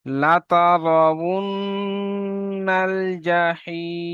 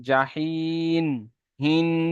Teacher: খেয়াল রাখবেন, জাহিন, হিন, এই আওয়াজটি আসলে নুনের আওয়াজ এসে যাচ্ছে। জাহিম, যখন দুটি ঠোঁট একসঙ্গে করে মিলিয়ে নেবেন তখনই মিমের আওয়াজ চলে আসবে